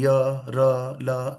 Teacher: य र ल यानी कंपन हो रहा है गले में। तो यह सघोष है।